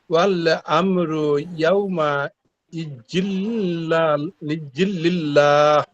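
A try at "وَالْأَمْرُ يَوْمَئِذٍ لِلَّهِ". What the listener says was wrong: হ্যাঁ, জালটাকে নরম করেন। ইজিল লিল্লাহ কয়ালিফ টান হবে লিল্লাহ কয়ালিফ হবে। তিন আলিফ। হ্যাঁ, লিল্লাহ। না, চারটা না, তিন আলিফ। ও লাম চারটা ঠিক আছে, কিন্তু বলছেন টান হবে তিন আলিফ আর কি। লাম চারটা ঠিক আছে।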